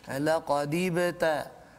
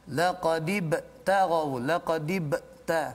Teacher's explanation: huruf ba itu sukun di tengah kalimah ketika wasal, maka dibaca dengan qalqalah surah